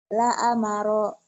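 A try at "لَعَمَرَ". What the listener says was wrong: La amara. Nggak ada yang panjang.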